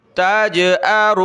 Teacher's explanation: जीम पर क़लक़ला करें